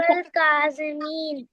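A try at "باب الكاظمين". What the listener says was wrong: काज़िमीन, बाबर नहीं, बाब अल काज़िमीन।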